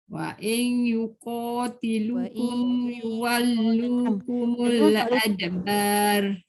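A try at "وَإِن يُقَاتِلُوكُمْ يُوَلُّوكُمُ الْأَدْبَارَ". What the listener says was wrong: Wa in tu dengung. Bila dengung ni dia tak boleh pendek, dia kena panjang. Wa in yuqatilukum. Adbar tebal. Yuwallukumul adbar. Dia tak boleh adbar. Jadi nipis adbar. Ra tafkhim.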